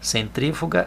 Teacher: centrífuga a sílaba tônica é tri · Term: proparoxítona